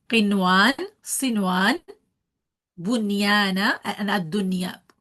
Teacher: we are reading the noon properly without the merging and with the timing how we read it in the izhar. There are only four words in Quran al-Kareem: qinwan, sinwan, bunyana, and ad-dunya.